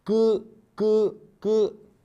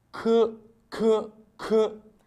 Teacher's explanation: l'aspiration est tellement faible que quelquefois on ne la remarque pas par contre la prononciation du que requier une aspiration plus forte